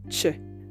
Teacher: the sound CH for the CH in Spanish is a voiceless post alv affricate this means that it's articulated with the blade of your tongue